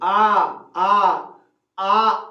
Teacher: आ में क्या हो जाता है कि मुंह पूरा खुल जाता है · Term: विवृत